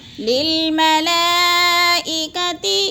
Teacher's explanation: چار الفی مد ہے، چار حرکات کے برابر ہم نے اس کو لمبا کر کے پڑھنا ہے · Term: مد متصل